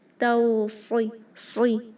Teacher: صاد بھی ہیوی کیونکہ وہ حروف المستعلیہ ہے۔ توصی، صی، اوکے، اس کو نہ تو سوی پڑھیں واو کا استعمال کر کے اور نہ ہی سین کی طرح لائٹ کریں گے۔